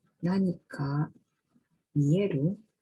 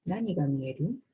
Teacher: First, the peak F0 value of the WH word nani is higher in a WH question than a yes-no question, which indicates the prominence of the WH indeterminates, meaning the prominence of WH interrogative. Second, the F0 bump in the verb mieru due to its lexical accent is not observed in WH question, which indicates a post-WH phrasing.